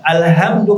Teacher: pakai h pangkal tenggorokan